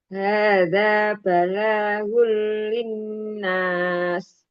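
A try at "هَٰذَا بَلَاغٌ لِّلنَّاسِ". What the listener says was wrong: Cukup segitu saja, jangan balagul, jangan ditahan lama.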